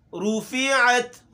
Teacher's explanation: رُفِعَتْ ہونٹ گول ہوں گی